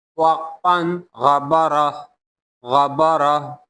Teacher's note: یہ جو آخر میں تھا دو پیشتن ہے، اس کو ہا میں تبدیل کیا جائے گا، اس کو پھر ہا پڑھا جائے گا، ہا۔ تو یہ غبرہ پڑھیں گے، اگر ہم روکیں گے تو یہ غبرہ پڑھیں گے، غبرہ۔